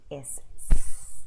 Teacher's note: That's a voiceless sound, so no vibration, right?